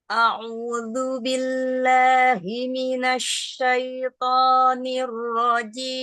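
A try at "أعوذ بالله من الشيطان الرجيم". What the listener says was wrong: Sudah bagus, To-nya tebalkan lagi. Minasyaito. Tebalkan lagi To-nya, angkat pangkal lidahnya.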